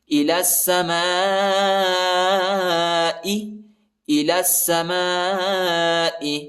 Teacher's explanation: ثم استوى، ثم استوى الى السماء، لام کو سین کے ساتھ ملائیں گے، یا نہیں پڑھا جاتا، یا کے اوپر حرکت نہیں ہے